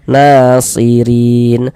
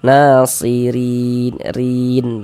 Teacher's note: Huruf ro yang memiliki harakat kasrah dibaca tipis dibaca tarkik. Nah, sehingga pangkal lidah kita tidak naik terangkat ke atas. Rileks saja santai lidah kita.